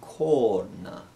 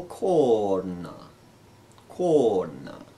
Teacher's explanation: this is a cerebral na and a long o corn corn where we have kona means an angle next we